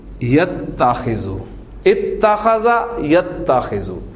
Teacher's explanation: اب دیکھیں آپ دو تا آ گئی ہیں، دوسری تا جو ہے وہ حرکت والی ہے اور پہلی ساکن ہے، تو ادغام کی آئیڈیل سچویشن ہے. لہذا ان دونوں تا کو مرج کر دیں تو یہ بن جائے گا آپ کا اتخذا